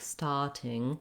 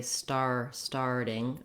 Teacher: For the R sound, what you want to feel is that you have a tight back tongue. So in American English, we always say our R's.